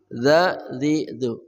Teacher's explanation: ujung lidah bersama ujung gigi seri atas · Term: dzal